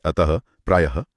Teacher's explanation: विसर्ग का उच्चारण ह की तरह होता है